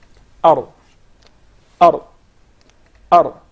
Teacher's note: So once again, the makhraj, or the origin of the Ra, it's articulated from the tip of the tongue with what lies opposite to it of the gums of the two front top incisors. Ar, Ar, Ar, without the repetition of the Ra.